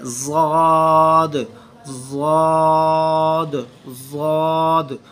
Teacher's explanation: ज़ुबान की बाईं साइड को ऊपर वाली जो दाढ़ें हैं लेफ़्ट साइड वाली, बाईं साइड वाली, उनके साथ इसको जोड़ा जाता है ज़ुबान को। दैन इसका मखरज, वहाँ से इसकी आवाज़ निकलती है ज़ाद ज़ाद ज़ाद।